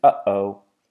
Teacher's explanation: the closing of the air in the throat and then a release of the air from the throat from the same place that we make the H noise V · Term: glottal reinforcement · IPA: [ʔ]